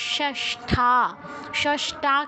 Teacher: যখন ঠ যুক্ত থাকে, যুক্তাক্ষর হিসেবে থাকে, একটা কমন ভুল, আমরা ঠ এর স্থলে ট উচ্চারণ করি, এটা যেন না হয় খেয়াল রাখবো।